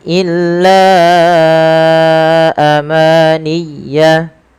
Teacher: Panjangkan la sepanjang 4 atau 5 harakat karena pada lafal bacaan la di sini ada mad jaiz munfasil, yaitu mad yang wajib kita panjangkan 4 atau 5 harakat dalam riwayat Imam Syatibi.